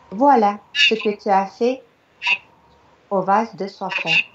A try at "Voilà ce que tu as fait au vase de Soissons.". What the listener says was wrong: Alors, bon, alors, c'est un tout petit détail, mais j'entends « voilà ». Voilà, j'entends Le A voilà. Est vraiment prononcé, il y a un accent sur le A, donc c'est vraiment A.